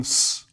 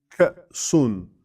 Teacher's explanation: between ka and sun is a stop of no noise whatsoever. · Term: pure stop